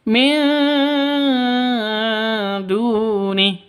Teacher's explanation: Du memiliki panjang dua ketukan karena wau sukun didahului oleh dammah · Du panjang 2 ketukan karena ada wawu mati diawali dengan dhammah. Mad asli atau mad tabi'i 2 ketukan. · Nun mati bertemu dengan dal. Samar didengungkan, siap-siap ke huruf dalnya karena ikhfa hakiki. Min duni seperti itu. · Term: Mad Thabi'i